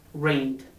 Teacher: For example, when we have the verb rain and we want to pronounce the verb rain in the simple past tense and we don't know which pronunciation to use, we touch our throats and we pronounce the last sound of the verb, n, is voiced, so the pronunciation must be rained.